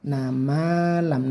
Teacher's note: nanya singkat saja langsung ke huruf ma-nya panjangkan 1 alif karena ini matobi'i.